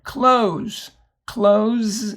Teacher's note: the S here has a z sound